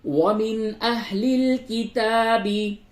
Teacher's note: نون ساکن کے بعد حمزہ ہے، اس جگہ پہ اظہار ہوگا، یعنی نون کی آواز کو بالکل ظاہر